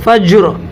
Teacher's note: عین لام زیر ال، یہاں لام پڑھا جائے گا، الف کو نہ پڑھیں گے چونکہ الف لام فا کے شروع میں اور فا حروف قمری میں سے ہے جی. اور را کے نیچے زیر ہے تو یہ را کیا ہوگی؟ باریک ہوگی